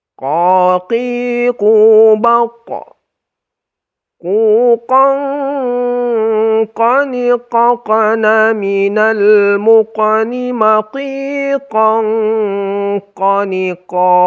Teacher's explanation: harus ditebalkan ya, karena qaf itu adalah salah satu huruf isti'la atau huruf tebal. Jadi ketika kita dengungkan itu tetap tebal dia. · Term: huruf qaf